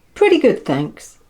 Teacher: Notice how the T in pretty becomes a D sound.